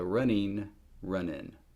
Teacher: The full form and the reduced form. But both of my forms have N, not engma. So the unreduced form is een with a non-engma, and the reduced form is in.